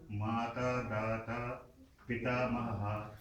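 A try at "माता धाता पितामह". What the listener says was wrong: Mata dhata pitamaha. Just do that dha with there, huh? Mata dhata. Mata dhata pitamaha. Mata dhata pitamaha.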